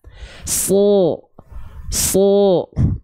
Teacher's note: Nggak pakai monyong loh. Vokal O-nya nggak pakai monyong loh.